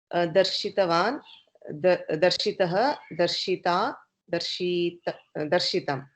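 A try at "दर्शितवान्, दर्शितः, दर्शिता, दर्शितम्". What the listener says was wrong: Darshitam. Well done.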